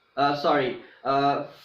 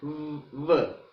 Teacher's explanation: Okay, the initial sounds of the words fat and vat, and the final sounds in the words safe and save are labiodentals. Okay, f is voiceless, v is voiced.